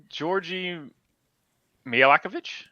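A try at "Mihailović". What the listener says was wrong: There's no C other than the end. Georgie Mihailovic.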